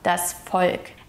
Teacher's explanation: the V is pronounced as an F sound